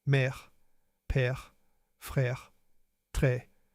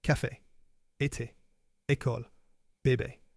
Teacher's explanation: The sound è is more open than é.